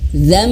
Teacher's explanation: bibir bawah dan atas itu tersentuh, tertutup rapat.